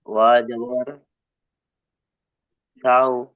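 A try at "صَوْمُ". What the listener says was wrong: সদের যে তিন আলিফ টান, সদের তিন আলিফ টানটা দিতে হবে। ওয়াওয়ের যে তিন আলিফ টান, ওই টানটা দিতে হবে।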